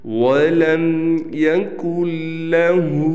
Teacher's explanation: یہ ہا کو ہم نے کھینچنا ہے، اس پر الٹا پیش ہے